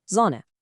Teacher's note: And let's log in 3 more quick single-letter rules. First, whenever you see an S at the start of a word, it's a soft sound, like in English Z